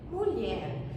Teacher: Eu não falo mulher, eu falo mulher. Eu ponho a minha tonicidade, a força da minha voz na última sílaba. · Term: oxítonas